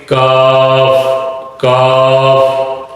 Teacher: تو زبان کی جو جڑ ہے وہ اوپر کے تالو سے ٹکرائے گی اور موٹا کر کے اس کو پڑھیں گے، قاف، قاف۔ اور دوسرا زبان کی جو جڑ ہے منہ کی طرف تالو کے ساتھ ٹکرائے اوپر والے تالو سے تو حرف ادا ہوگا کاف۔ باریک کر کے پڑھیں گے، کاف، کاف۔ اور زبان کا جو درمیانی حصہ ہے وہ اوپر والے تالوں سے ٹکرائے گا تو 3 حروف ادا ہوں گے، جیم شین یا، جیم شین یا۔